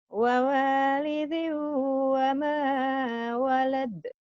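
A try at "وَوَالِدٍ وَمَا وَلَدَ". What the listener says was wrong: Tuh bagus kan?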